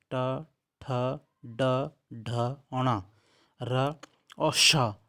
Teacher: ट ठ ड ढ ण र और श यह मूर्धा से उच्चारित होते हैं · ट वर्ग के 5 अक्षर ट, ठ, ड, ढ, ण, र और श ये मूर्धा से उच्चारित होते हैं। इनका उच्चारण स्थान मूर्धा से किया जाता है।